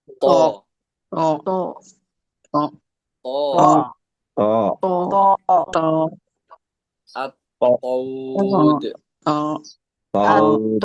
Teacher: huruf th dibaca tebal dalam semua keadaan dan pantul saat sukun tidak memiliki harakat ya. Jadi th ini di semua keadaannya pun tebal kalau ya kalau lagi dan dia pantul dia di sini ya.